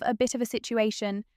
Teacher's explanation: the falling tone on situation where the voice goes down, never up